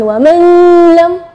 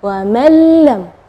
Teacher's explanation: Ya, di situ kita bacanya wa mallam ya, jadi huruf nunnya tidak ada, atau kita dibilang idgham ke huruf berikutnya dan gunnahnya tidak ada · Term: idgham bila gunnah